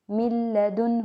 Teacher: بلا غنہ کا مطلب ہوتا ہے غنہ کے بغیر۔ من لدنہ، نون کی آواز کیا ہو گئی، ایک دم سے کہیں غائب ہو گئی ہے · اس میں ہم ملاتے تو ہیں لیکن ہم غنہ نہیں کرتے، بلا غنہ۔ بلا غنہ کا مطلب ہوتا ہے غنہ کے بغیر۔ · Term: ادغام بلا غنہ